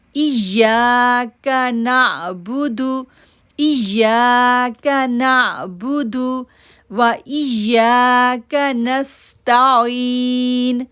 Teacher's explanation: حمزہ کو یا کے ساتھ جوڑیں گے، شدت ظاہر کریں گے، یا کو 2 سیکنڈ کے لیے کھینچیں گے